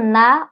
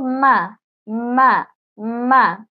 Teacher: নুন যখন পড়বো তখন মুখ ফাঁকা থাকবে এক আঙ্গুল পরিমাণ ও মিম যখন পড়বো তখন মুখ ফাঁকা থাকবে না